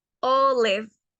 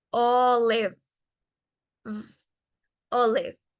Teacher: Yo no cierro mi boca a la hora de pronunciar la B.